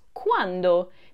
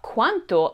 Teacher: make sure you stress the D sound which is voiced as opposed to the T sound which is unvoiced which could change the meaning completely now we'll learn more about